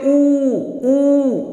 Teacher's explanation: आपके होठ जो है वो गोलाकार आकृति बना रहे हैं, वो अपना आकार दे रहे हैं कि आप ऊ शब्द का उच्चारण कर सकें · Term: ओष्ट